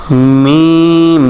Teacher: মিম, দুই ঠোঁটের শুকনা জায়গা হইতে, মিম, দুই ঠোঁটের ভিজা জায়গা না, মিম না, মিম মিম মিম।